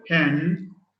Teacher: we say it's voiceless bilabial. Voiceless bilabial sound.